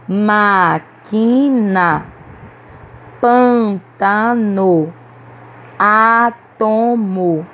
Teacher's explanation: todas as sílabas mais fortes, que nós pronunciamos com mais força, foram as antepenúltimas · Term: proparoxítonas